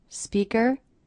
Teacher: I notice my voice goes up at the end here. Speaker. That's because the sentence isn't over.